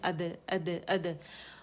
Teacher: half ज़बर जो होगी वो कलकले की साउंड होगी, जबड़ा उसके ज़बर के मुकाबले में कम खुलेगा